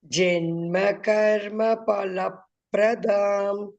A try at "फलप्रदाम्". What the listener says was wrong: that pa you have to stress, learn that one.